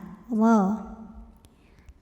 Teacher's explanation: Maka cara bacanya dibunyikan dengan tebal. Jadi pangkal lidah kita angkat. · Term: tafkhim